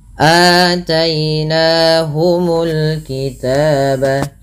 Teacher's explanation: Dan padahal fal aataina di sini ada hamzah berharakat fathah bertemu dengan huruf mad berupa alif. Panjangnya sendiri untuk mad badal adalah dua harakat.